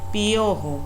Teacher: En la palabra piojo, fíjense cómo cuando yo pronuncio piojo, esa I y esa O no suenan separadas. Escuchen, piojo. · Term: diptongo